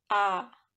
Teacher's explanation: vokal rendah, dibentuk apabila rahang bawah diundurkan lagi sejauh-jauhnya, seperti huruf A.